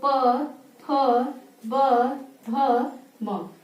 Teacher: जो प वर्ग है ये होठ से यानी इसको जब हम बोल देंगे तो हमारे दोनों होठ आपस में स्पर्श करते हैं। ठीक, बोल के देखिए, बोलिए प ह, यानी जो वायु है वो होठ से चिपक कर फिर निकलती है। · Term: ओष्ठ वर्ण